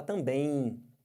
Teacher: você além de estar nasalizando o é você tem esse M que vai ficar com som de i